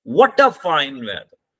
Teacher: व्हाट पे हमारी stress लगेगी.